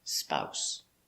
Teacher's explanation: this s is pronounced like an s not a zebra not z